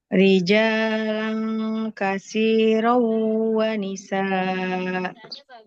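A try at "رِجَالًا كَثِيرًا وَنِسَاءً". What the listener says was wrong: Enggak boleh wanisa. Wa nisaa. Hamzahnya panjangkan dua harokat.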